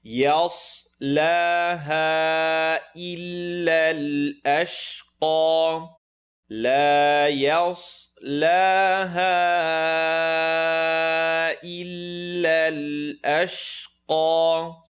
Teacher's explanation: Lam stretch for two. Ya is light, sad is heavy.